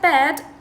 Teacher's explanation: the word bed for example begins and ends with voiced stops